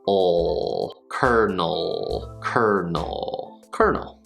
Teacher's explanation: So we start with the N sound, n, n, n, and then just a dark L